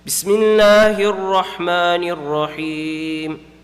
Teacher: I'm reading the Ra in Bismillahir Rahman with a full mouth